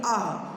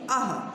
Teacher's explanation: अह कहाँ से आवाज़ आ रही है? आपके गले से आ रही है, आपके कंठ से आ रही है। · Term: विसर्ग